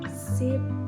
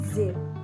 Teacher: Notice that the s is voiceless, but the z is voiced. Here's a practical tip for learner that place your hand in front of your mouth and say you should feel a steady stream of air coming out.